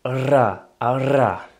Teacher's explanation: vous allez faire passer un souffle d'air qui va faire vibrer la langue contre les dents. Donc techniquement, ça donne RRRA. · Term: R roulé